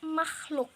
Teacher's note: Bunyi velarisasi itu merupakan bunyi sertaan yang dihasilkan dengan cara lidah dinaikkan ke arah langit-langit lunak atau velum sehingga terdengar bunyi sertaan X